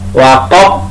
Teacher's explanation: baknya juga qalqalah kubro, dibaca memantul